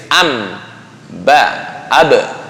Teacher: Karena ba dan mim satu makhraj. Di mana? Dua bibir.